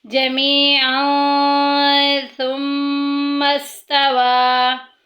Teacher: ثم دیکھیں میم مشدد آ گیا، غنہ کریں گے، ناک میں آواز لے کے جائیں گے